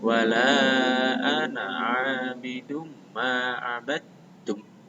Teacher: Ini panjangnya wala, lanya itu 5 ketukan. Ingat, ananya pendek.